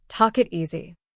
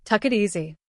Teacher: But in natural speech, the K sound moves into the next word. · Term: linking consonants to vowels